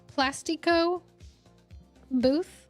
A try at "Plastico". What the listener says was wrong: Why did you almost say that like in a Hispanic accent? I think it's just Plastico. But I think you said Plastico. Plastico.